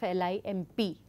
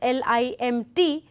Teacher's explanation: m and p, these are homoorganic, but m and t are not homoorganic, they are heteroorganic ones